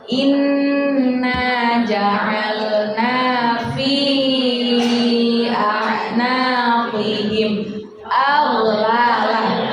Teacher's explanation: ada inna sama gunnah, harus ditekan dulu, ditahan, nggak boleh langsung cepat-cepat